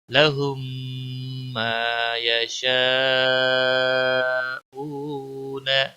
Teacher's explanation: لہم ما یشاءون، ما کو کھینچا جائے گا گنہ کے بعد، یشاء بڑی مد ہے، 5 الف کے برابر کھینچنا ہوگا ، او واو مدہ ہے، 1 الف کے برابر کھینچنا ہوگا،